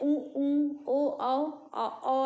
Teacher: तो पहला है वृत्तमुखी, दूसरा है अवृत्तमुखी। वृत्तमुखी में मुंह एकदम गोल खुला होता है, अवृत्तमुखी में मुंह आधा खुला होता है।